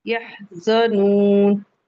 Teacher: हा पे हम्स का कायदा भी हो रहा है